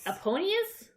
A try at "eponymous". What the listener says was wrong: But there's an M.